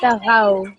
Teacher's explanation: No, because it's a lean letter, so you have to kind of sound the fatha and sort of merge it with the waw. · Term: waw lean